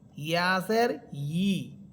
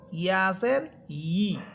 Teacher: ইয়া হরফের মাখরাজ হচ্ছে জিহ্বার মধ্যখান উপরের তালুর সাথে লাগবে। তাহলে হামদাসের ই, এটার উচ্চারণ এইভাবে পড়বেন হামদাসের ই।